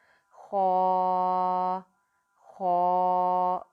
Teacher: خوا جو ہے 2 حرفی لفظ ہے، اس کو ہم 2 حرکات لمبا کر کے پڑھیں گے۔ خوا کی ادائیگی کرتے وقت آپ نے خاص خیال رکھنا ہے کہ اس میں آپ کے ہونٹ گول نہیں ہو۔